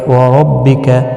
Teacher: را زبر کی وجہ سے پر پڑھا جائے گا